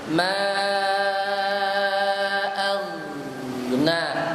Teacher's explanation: Jangan sampai ma aghna seolah-olah qalqalah. Oghin tidak masuk huruf qalqalah, tapi suara mengalir.